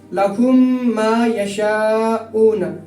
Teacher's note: تو جیسے لہم ما ہے تو میم ساکن ہے، میم ساکن کے بعد دوسری میم آ رہی ہے، تو اس لیے یہاں ہم تھوڑی دیر آواز ناک میں رکا کر پڑھیں گے، تو اسی کو غنہ کہتے ہیں۔